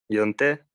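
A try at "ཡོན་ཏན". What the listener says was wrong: yunten, yunten. So you'll have to work on this. This na, the first na has to be more subtle. So instead of yon, it has to be yun, yun, yun, yun, yun.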